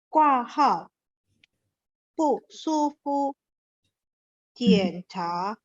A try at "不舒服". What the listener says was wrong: Fu-nya ada 5, jadi enggak usah tarik terlalu panjang ya. 不舒服。 对, Fu-nya pendek karena dia nada 5 ya. 不舒服.